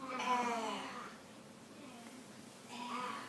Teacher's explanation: When I say ah, my mouth is open pretty wide, and I can kind of feel my tongue close to my teeth.